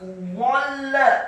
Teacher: dha-nya dibaca fathah 1 harokat dan tafkhim dengan posisi lidah kita di langit-langit atas